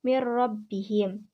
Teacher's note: cara membaca nun mati dan tanwin dengan memasukkannya pada huruf lam dan ro tanpa mendengung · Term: idgam bilagunnah